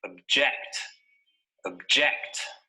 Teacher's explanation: notice that the stress is on the second syllable